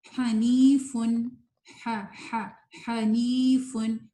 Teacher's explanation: اب یہاں پہ نی نہیں کہنا, یعنی یا کے اندر غنہ نہیں پیدا کرنا, صرف نون میں ہلکا سا ہوگا